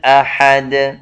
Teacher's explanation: احد ہا کا اپنا آواز اور آگے دال جو ہے اس کا اپنا قلقلہ کی صورت میں ہے